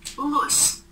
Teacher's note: Во рту возникает преграда для воздуха. И значит Л согласный звук. И мы слышим, что больше голоса, чем шума.